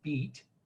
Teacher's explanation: when i say the word beat the highest part of my tongue is as far front and as high as it's going to be